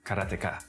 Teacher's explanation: In Japanese, uh there's no stress on any syllable.